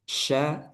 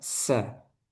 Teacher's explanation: Syin di tengah lidah sin di ujung